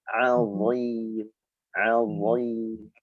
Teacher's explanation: Huruf dha makhrajnya satu sama zal, ujung lidah, ya, yang dikeluarkan sedikit. Bedanya pangkal lidah kita harus naik karena sifat huruf dha itu isti'la, lidah naik maka suara tebal.